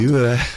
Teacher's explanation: Just keep your mouth like in the same shape, and the vowel shouldn't change through the process of that sound. Yue. And then it opens up into the eh.